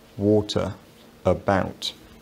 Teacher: Another thing is this central vowel which seems to only occur in unstressed syllables